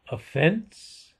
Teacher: Accent on the second syllable